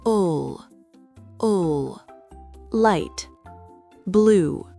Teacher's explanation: L'air coule de manière fluide autour de la langue. Le bout de la langue est bien appuyé derrière les dents du haut. En fin de mot, le L est souvent plus sombre en anglais. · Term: Les liquides